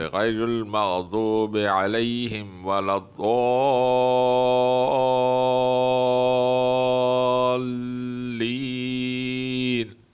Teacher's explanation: دوبارہ سن لیں، وہ حروف مدہ جس کے بعد اگر حرف شد والا آ جائے، مشدد آ جائے یعنی شد والا آ جائے، تو اس مدے کو 5 الف کے برابر کھینچا جائے گا، یعنی تقریباً 5 سیکنڈ، اور اس کو مد لازم بولتے ہیں